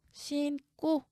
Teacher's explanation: 그리고 이어지는 어미, 고는 어미예요. 어미의 첫소리 기역이 나오네요. 그렇다면 된소리로 발음하래요.